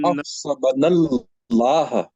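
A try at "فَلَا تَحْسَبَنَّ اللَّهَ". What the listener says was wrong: نون کے اوپر تھوڑا زور دیں. تحسبن اللہ،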